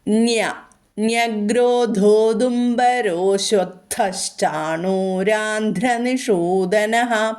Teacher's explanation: ന്യ എന്നാണ് പറയുന്നത് ഇതും പറഞ്ഞു തന്നിട്ടുണ്ട് ഇവിടെ വർത്യം ആയിട്ടുള്ള നയാണ് ആദ്യാക്ഷരമാണ് നയ എങ്കിലും ഇവിടെ വർത്സ്യമായിട്ടാണ് നമ്മൾ ഉച്ചരിക്കുക യകാരം കൂടെ വരുന്നതുകൊണ്ട്